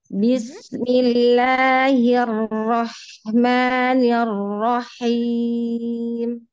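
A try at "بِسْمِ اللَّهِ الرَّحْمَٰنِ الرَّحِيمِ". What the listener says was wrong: Ahsan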